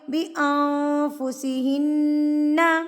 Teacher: یہاں پر ہم ناک میں آواز کو چھپا لیں گے